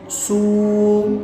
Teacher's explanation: واو ساکن سے پہلے پیش ہو تو واو مدہ ہوگا۔ حرف مدہ کو ایک الف یعنی دو حرکات کے برابر کھینچ کے پڑھیں گے